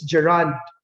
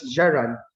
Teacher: the stress is on the second syllable · the stress is on the first syllable